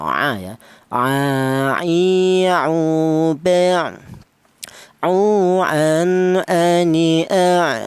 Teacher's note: Huruf ain keluarnya huruf berasal dari tengah tenggorokan